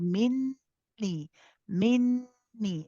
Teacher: Again, the students of QSL will already know about this. Minni, we make the noon akmal gunna. It is the longer gunna. We hold minni, minni.